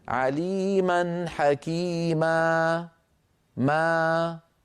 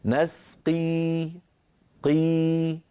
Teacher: بقي الحلقوم مفتوحا والصوت تخامد إلى أن تلاشى. نسقي قي، فيبقى الصوت متخامدا إلى أن ينتهي وينقطع. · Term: المد الطبيعي